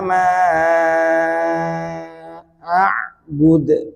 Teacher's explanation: bud ya, langsung dimatikan, ini namanya qalqalah kubro karena di akhir ayat atau saat waqaf ya. Karena diwaqafkan.